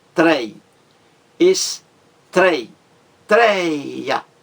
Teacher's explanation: A mais forte é a penúltima, trei. Existe aí também um ditongo aberto, tônico, forte.